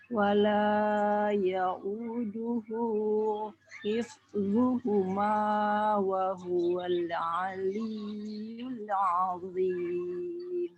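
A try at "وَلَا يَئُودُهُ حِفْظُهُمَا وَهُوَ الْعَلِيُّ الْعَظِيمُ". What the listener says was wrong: Lamnya jangan dimatukan. Wala ya'uduhu hifzuhuma wa huwal aliyyul azim. Nah, tadi tinggal panjang pendeknya yang mad, masih ada yang terlalu panjang 3 sampai 4 harokat ya. Ketika ada yang 2 harokat cukup diayun saja.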